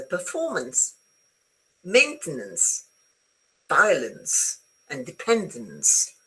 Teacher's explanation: the last vowel very often is unstressed, and so it becomes a schwa